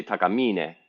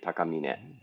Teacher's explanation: japanese is kind of flat when you when you speak it so that you don't stress any of this syllables necessarily